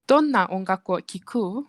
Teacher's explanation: But how do you make it sound like it is a question? So basically you just end the sentence with a rising intonation